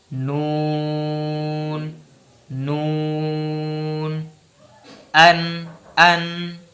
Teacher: এরপর চলে আসি, এরপর হচ্ছে 9 নম্বর মাখরাজ, জিবার আগা উপরের পাটির সানাইয়া, রবাইয়া, আনিয়াব এই 3 দাঁতের গোড়ার তালুর সঙ্গে লাগিয়ে নুন বলতে হবে। বলছে জিবের আগা, এখানে জিবের আগা বলছে, শুধু আগা কিন্তু কিনারা বলছে না, জিবের আগাটা উপরে যে ওই 3টা দাঁত যেটা বললাম, ওই 3টা দাঁতের গোড়ার যে তালুর অংশটা মনে একটু পিছাতে হবে।